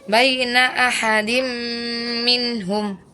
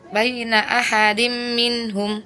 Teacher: Idgham bigunah harusnya ditahan 2 harakat disertai dengan dengung ya.